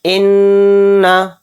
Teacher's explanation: हमज़ा नून ज़ेर इन, नून ज़बर ना, इन्ना, यानी नून पर तशदीद है तो इसमें गुन्ना भी करेंगे।